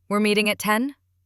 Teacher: I keep my voice steady and end with a soft rise.